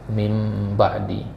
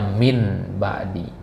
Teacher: Nah, iklab itu membalik, jadi dibalik huruf nun menjadi huruf mim